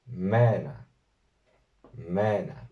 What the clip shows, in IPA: 'meː.na